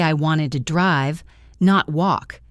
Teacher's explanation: It gets long and loud. Or if I say I wanted to drive, not walk, I stress drive and walk. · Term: corrective stress